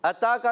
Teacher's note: अता का ता पर खड़ा जबर है एक अलिफ खींच कर अदा करेंगे